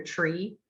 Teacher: when you go from a t to a ch, or to the r, you pass ch.